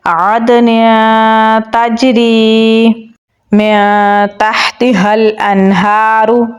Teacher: تا کو جیم کے ساتھ ملائیں گے اور قلقلہ کریں گے. را کو باریک پڑھیں گے اور یا کے ساتھ ملائیں گے. یا حروف مدہ میں سے ہے تو 1 الف کے برابر لمبا پڑھیں گے تو پڑھا جائے گا عدن تجری من تحتها الانہار.